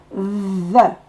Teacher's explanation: on met la langue entre les dents et on dit Z.